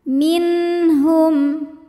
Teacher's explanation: bunyi nun dibunyikan dengan jelas, jadi bunyinya N dan tidak kita tahan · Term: idhar halqi